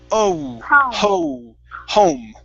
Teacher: Instead of hom, it's going to be oh. It's a diphthong here.